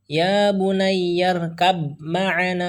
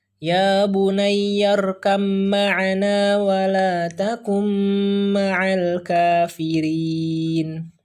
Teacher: Jadi langsung saja, ya, dari huruf kaf langsung ke huruf ma tanpa membaca huruf ba-nya.